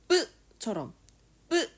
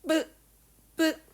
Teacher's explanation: 빡 힘 줘서 공기 조금 내보내면서내는 소리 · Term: 된 소리